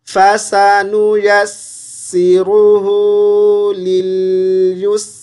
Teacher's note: या को सीन से मिलाएंगे तो सीन की आवाज़ को थोड़ा सा खींचेंगे, शद को अच्छे से पढ़ेंगे।